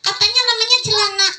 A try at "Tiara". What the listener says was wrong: Tiara pakai T ya.